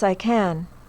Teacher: At the end of a sentence, can is stressed.